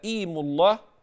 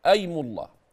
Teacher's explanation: فقال بعضهم بالكسر هكذا ايم الله وبعضهم قال بل بالفتح والفتح اشهر ايم الله فهذه الهمزه الوحيده التي يختلف فيها من همزات الاسماء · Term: همزه الوصل